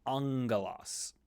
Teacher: When you have the gamma doubled, it becomes an NG sound in English.